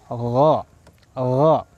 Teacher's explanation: Adnal halqi yaitu ujung tenggorokan. Ujung tenggorokan, awal tenggorokan yang paling dekat dengan lidah. Itu makhraj daripada huruf ghain.